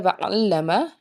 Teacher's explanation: لام کے اوپر تشدید ہے، لام کو 2 بار پڑھیں گے